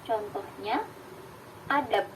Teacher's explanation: B itu bunyi bersuara. Namun ketika dia pada posisi koda, dia akan menjadi bunyi p. P ini adalah bunyi tak bersuara.